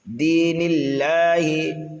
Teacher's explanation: نون کو ہم لام میں ملائیں گے اور لام کو ایک الف کے برابر کھینچ کر کے پڑھیں گے، اس لیے کہ دوسرے لام پر کھڑا زبر ہے، لیکن اس لام اللہ کو جو ہے ہم باریک پڑھیں گے۔